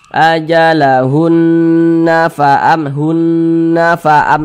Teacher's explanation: cara bacanya diunahkan atau didengungkan jadi suaranya itu kita tahan kita panjangkan sejenak ajalunna faam hunna faam nah ditahan dipanjangkan sejenak seperti itu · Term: gunah musyaddadah, gunnah musyaddadah